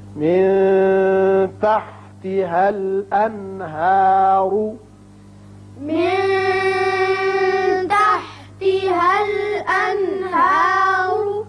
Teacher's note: تجري من تحتها الأنهار من تحتها الأنهار یہاں اخفا ہوگا اور یہاں نون پر چونکہ بعد میں ہا آ گیا اظہار ہوگا